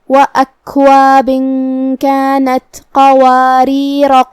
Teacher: ہم مد الف کو نہیں ظاہر کریں گے، پھر صرف را کو زبر سے پڑھیں گے